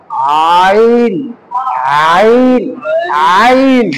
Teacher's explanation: কণ্ঠনালীর মধ্যখানে চাপ দিয়ে উচ্চারণ হবে আইন। তাহলে কণ্ঠনালী চাপ দিব, আইন আইন আইন।